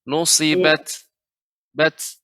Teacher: huruf ta ketika disukunkan sifatnya adalah hamas ya